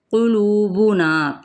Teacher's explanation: قلوبنا، قاف پر ہے، لو پہ واو مدہ ہے، اس کو کھینچیں گے اور نا کو بھی کھینچیں گے صرف ایک الف کے برابر